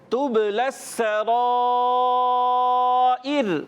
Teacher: با میں قلقلہ ادا کریں گے، آواز لوٹ کر آئے گی. سین کی ادائیگی باریک سیٹی کے ساتھ. اور پیارے بچوں را پر زبر آنے کی وجہ سے پر، اور مد ہے یہ بھی مد متصل، اس کو بھی 2 ڈھائی الف کھینچ کر ادا کریں گے.